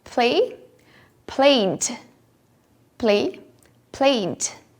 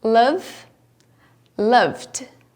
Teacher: Como vibram as cordas vocais, o ED recebe o som de D.